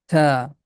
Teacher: The name of this letter is ta. Tip of tongue is touching with the root of frontal teeth. Ta. This letter does not have any equivalent sound in English.